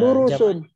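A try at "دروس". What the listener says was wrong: Ya, durusun ya.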